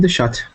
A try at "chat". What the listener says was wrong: yeah, when you say chat, say it the English way, like ch, English, the chat.